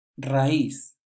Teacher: the stress is on the I, and we need to make a pause between the A and I